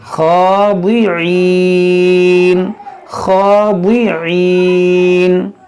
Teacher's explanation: فظلت یہاں پر عین ہے, اعناقهم لها خا, یہ خا حرف مشتعلیہ ہے, کھڑا زبر ہے, موٹا بھی کریں گے کھینچیں گے بھی